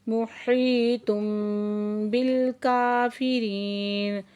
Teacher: کاف کے اوپر کھڑا زبر ہے، دو حرکت کھینچیں گے، اور ری پہ یا ساکن سے پہلے زیر ہے تو یا مدہ ہے، اور آیت مکمل ہو رہی ہے.